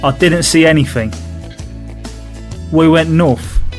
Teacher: The unvoiced th sound becomes a f sound.